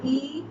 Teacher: আমরা যখন উচ্চারণ করি দেখো ই, তখন কম ফাঁক হচ্ছে মুখ, তাই এটি সংবৃত